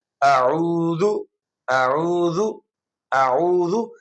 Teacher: عین حمزہ والی آواز نہ ہو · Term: عین کی آواز